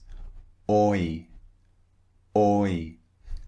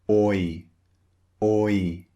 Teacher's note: It starts round and it finishes slightly wide.